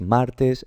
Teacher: Aquí era pared, el acento estaba en la última, aquí es martes, el acento está en la penúltima